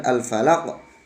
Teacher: Falaq, qalqalah itu artinya memantul. Jadi ketika kita mengucapkan al-falaq, qafnya harus memantul.